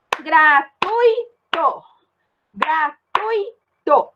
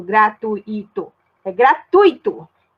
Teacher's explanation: Gratuito. Ó, o U e o I ficou junto. Não fica separado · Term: ditongo